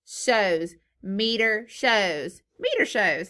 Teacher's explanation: the z sound let's go ahead and put a voice line on that because our vocal cords are vibrating